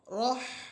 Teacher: এই হা হরফ আমরা উচ্চারণ করব যেন আমাদের মুখ থেকে বাতাস যে বের হচ্ছে ওই বাতাসের একটা শব্দ হয়